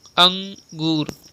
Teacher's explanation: यह स्वर के बाद आने वाला व्यंजन है जिसकी ध्वनि नाक से निकलती है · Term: अनुस्वार